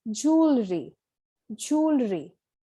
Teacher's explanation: jewelry, where the stress is on the first syllable.